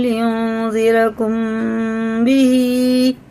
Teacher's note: میم ساکن کے بعد با آ رہا ہے تو یہ اخفا شفی ہوئے